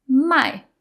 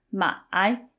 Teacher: So my I is third tone and my is fourth tone. So the fourth tone is more forceful and it sounds a little bit angry and the third tone has kind of a dip in the middle